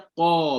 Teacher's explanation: Bila kita sebut huruf qaf, maka huruf tu dia akan tinggi, dia akan isti'la.